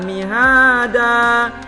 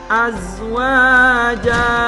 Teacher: Mad iwad itu adalah fathatain diganti baca panjang satu alif atau 2 harakat.